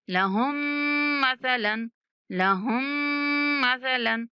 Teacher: हा को direct मुशद्दद मीम के साथ मिलाएंगे और मीम पर गुन्ना करेंगे